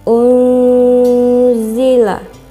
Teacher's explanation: cara membacanya samar dengan dengung dan ditahan selama tiga harokat pada waktu pengucapan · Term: ikhfa